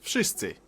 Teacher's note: W in wszyscy should sound like wy, wódka, wojna, but it seems to soften up to an F